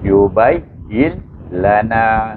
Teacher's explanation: Kena baca dengan idgham bila gunnah. Terus bila gunnah. Iaitu terus masukkan il terus kepada lam.